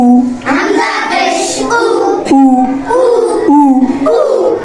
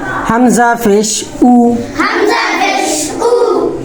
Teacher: হামজা পেশ উ। ঠোঁট গোল হবে।